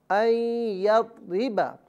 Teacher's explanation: یہاں نون ساکن کی آواز نہیں ہوگی بلکہ یا کی ہوگی، اور یا کی آواز غننے کے ساتھ نکالی جائے گی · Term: غنہ